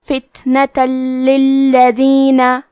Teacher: فتنتن، آخری میں تا پہ تنوین زبر ہے، پھر حرف اللام آتا ہے کلمت للذین۔ لام حروف الادغام بغیر غنہ میں سے ہے تو ہم تنوین کو لام میں ملا کے بغیر غنہ سے لیکن تشدید کے ساتھ یہ حکم کو ادا کریں گے